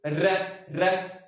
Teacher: क्या नाम है मित्रों, लुंठित या प्रकंपित। यानी कि इनके उच्चारण में जीभ लुढ़कती है